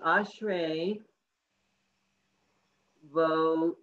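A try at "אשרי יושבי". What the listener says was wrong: No, this is a yud.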